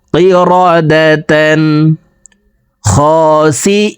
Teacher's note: তানবিনের পর ইজহারের 6 হরফের একটি হরফ খ আসছে এই কারণে এই দুই জবর ওয়ালা তাটি গুণনা ছাড়া স্পষ্ট করিয়া পড়ব